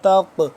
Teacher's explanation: ولا تقربوهن، تا قاف زبر تق، قاف موٹا کر کے پڑھیں گے اور اس کے اوپر دیکھ رہے ہوں گے آپ جزم ہے، قاف یعنی کہ ساکن ہے تو اس کو ہم حروف قلقلہ میں سے ہے، اس پہ ہم قلقلہ بھی کریں گے.